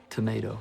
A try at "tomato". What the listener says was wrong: Is that right? It's the A. You know.